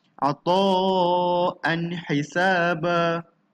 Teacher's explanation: Kita bukan baca ata'an hisaba. Tak ada dengung-dengung. Jelas bunyi tanwinnya.